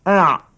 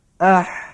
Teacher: Ain bawah, ha naik atas sikit. Itu bezanya katanya.